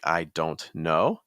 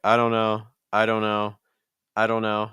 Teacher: notice that don't becomes dun dun, like a schwa sound